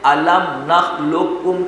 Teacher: قوف کی آواز کو بالکل ختم کر کے صرف ایک کاف مشدد ادا کریں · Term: ادغام تام